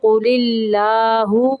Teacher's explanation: یہاں پہ اللہ کا لام باریک پڑھیں گے